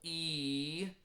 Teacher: the syllable e you'll notice your tongue is really high